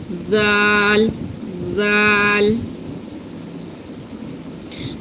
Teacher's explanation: We touch our tongue tip here to the upper teeth tip and say z.